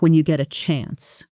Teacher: Notice how give me a call often becomes gim a call in fast, casual speech, and when you get a chance compresses into something closer to when ya get a chance